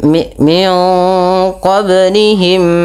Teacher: pada lafal qablihim ada bacaan qalqalah yang di mana huruf bnya wajib kita pantulkan · Idgham mimi terjadinya ada dua huruf mim yaitu mim dan mim mimi yang di mana mim yang pertama dimasukkan kepada mim kedua dan ditahan sepanjang dua harakat